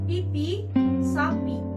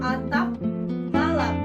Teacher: Fonem P. P bunyi lepas jika diikuti vokal, contoh pipi, sapi. P bunyi tak lepas jika terdapat pada suku kata tertutup, contoh atap, balap.